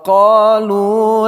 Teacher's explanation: qa panjang dua harakat, lu panjang dua harakat